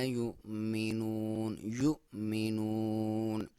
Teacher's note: یا پہ پیش ہے اور واو کے اوپر آپ کو حمزہ نظر آ رہی ہے تو حمزہ پہ جزم ہے. تو جب بھی حمزہ پہ جزم ہو تو وہاں پہ تھوڑا سا جھٹکے سے پڑھا جاتا ہے